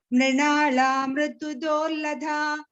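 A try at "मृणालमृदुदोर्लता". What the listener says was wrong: Good ma, it is Dorlatha. It is not Lada. Dorlatha.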